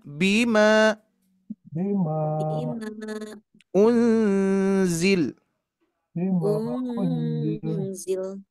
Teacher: Jadi ketika diwasolkan 4 sampai 5, ketika diwakofkan menjadi 2 harkat. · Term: majaiz munfasil